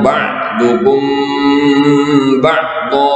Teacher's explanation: Lalu yang kedua adalah ada kalimat ba'dukum ba'dha. Itu dibaca ikhfa syafawi karena mim mati bertemu dengan huruf ba